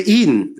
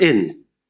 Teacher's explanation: in St. Lucian speech, we tend to select tense vowels, where a lot of other speakers select lax vowels